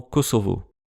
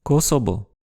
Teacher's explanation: Mais le son V n'existe pas en japonais